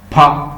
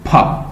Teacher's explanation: it is considered to be made up of the bilabial stop voiceless